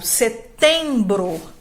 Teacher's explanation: nasalizador é um som em que a gente vai falar palavra nos sentimos o ar saindo pelo nariz